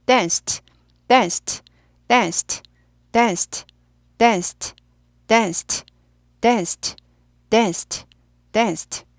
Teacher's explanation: danced 하죠. 스가 무성음이잖아요. 그럼 트 무성음이 됩니다. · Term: 트 발음